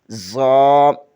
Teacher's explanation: زبان کی نوک ثنائے سفلی یعنی نیچے والے دانتوں سے لگے تو ذا ادا ہوتا ہے